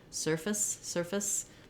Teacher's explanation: we almost make no vowel there at all. Just going from your f to your s sound · So even though we spell surface with F-A-C-E like face, we don't have a clear vowel because in surface, the first syllable is stressed and the second syllable is short and it has the reduced vowel. So sometimes I'll just mark it like this for people to see, okay, we almost make no vowel there at all. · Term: very reduced vowel